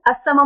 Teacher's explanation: अस्समाउ में लाम नहीं पढ़ा जा रहा क्योंकि हुरूफ शम्स, लेकिन इसके बावजूद यहाँ पे हमने लाम हमें नजर आ रहा है, लिखने में लाम आ रहा है, तो हमने क्या किया, उससे पहले पता लगाया।